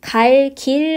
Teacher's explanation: 리을 뒤에서 기역이 쌍기역으로 바뀌어서 갈 길로 발음이 되게 됩니다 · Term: 된소리